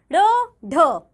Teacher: जिन व्यंजनों के उच्चारण में जीभ ऊपर उठकर झटके से नीचे आती है वे उक्षिप्त व्यंजन कहे जाते हैं, जैसे ड़, ढ।